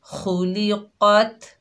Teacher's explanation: खा को और क़ाफ को मोटा अदा कीजिए, हुरूफ़ मुस्तालिया में से हैं